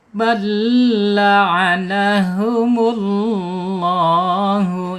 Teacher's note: Penekanan di huruf lam yang bertasyid